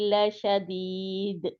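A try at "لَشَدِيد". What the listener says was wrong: लशदीद आसानी से, शदीद नहीं करना, यानी कि इसके ऊपर दाल के ऊपर सख्ती से नहीं रुकना, ठीक है। दाल को बहुत आसानी के साथ दाल के मखरज से बाहर आ जाना होता है, ठीक है। लशदीद लशदीद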